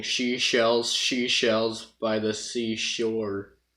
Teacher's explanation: the way Donald does the S sound and the SH sound sound very similar